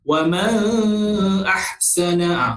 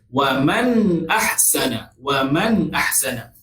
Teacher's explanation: Izhar halqi ni ialah kita tidak dengung. Kita tidak dengung antara nun mati dengan hamzah itu.